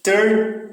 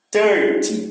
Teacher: O final é que tem mais força, 13. E em 30, o que é mais forte já é o começo, tá vendo? 30, tá certo? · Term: syllable stress